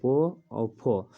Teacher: दांतो यानी कि दांत और ओट दोनों मिलता है